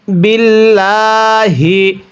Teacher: যদি আল্লাহ শব্দের লামের পূর্বে এরকম জের থাকে তাহলে আল্লাহ শব্দের লামটিকে চিকন করে পড়তে হয়